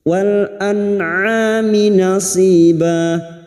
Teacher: nun sukun dibaca jelas tanpa mendengung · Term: idhar halki